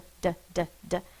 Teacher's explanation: My tongue is tapping the top of my mouth like a drum.